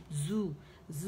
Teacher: buzzing sound, whistling sound, سٹی کی آواز ہے